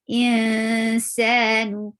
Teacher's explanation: nu, circle your lips, and the sound is short.